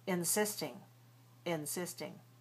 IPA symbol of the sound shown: ɪ